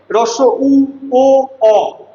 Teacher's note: রস উ ও অ প্রত্যেকটা বর্ণ উচ্চারণ করার সময় ঠোঁট গোলাকার থাকে। এইজন্য এগুলোর আরেকটা বৈশিষ্ট্য হলো গোলাকৃত।